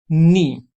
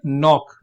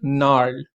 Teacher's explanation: When a word begins with K or G and then is immediately followed by N, the K or G is not pronounced. Instead, it's almost as if the word started with an N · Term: silent